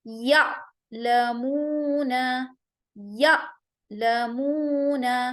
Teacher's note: ہم الف کے اوپر آواز کو سختی سے جھٹکا دیں گے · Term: حمزہ